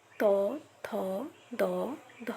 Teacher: যে ব্যঞ্জনগুলো উচ্চারণের সময় আমাদের জিহ্বা দাঁত বা দন্তমূলকে স্পর্শ করে তাকেই দন্ত ব্যঞ্জন বলবো।